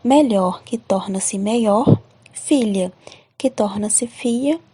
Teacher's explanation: o fonema língua palatal lh muda-se na semivogal y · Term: vocalização